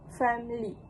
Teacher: In this pronunciation, the middle schwa sound is dropped, resulting in two-syllable word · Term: reduced form